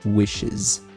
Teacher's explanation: esse Szinho sai com som de Z no alfabeto fonético. Então fica wishes.